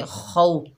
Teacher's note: तो ये वाव लीन है, इसे नरमी और जल्दी से अदा करेंगे। और खा जो है हरूफ़ इस्ताला में से है, तो मोटा अदा करेंगे खौ, खा की आवाज़ खुरदरी होती है, खौ।